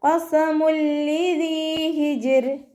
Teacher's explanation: വമ്മ തെൻവീനിന് ശേഷം ഇദാം ബിലാഉന്നയുടെ അക്ഷരമായിട്ടുള്ള ലാമ് വന്നു. തെൻവീനുള്ള നൂനിനെ ലയിപ്പിച്ചിട്ട് മണിക്കാതെ ഓതി കൊടുക്കുക · ഇവിടെ ഹ തൊണ്ടയുടെ മധ്യഭാഗത്തു നിന്നാണ് വരുന്നത്. സൗണ്ടിനെ ഹംസയായി പോവാതെ ശ്രദ്ധിക്കുക.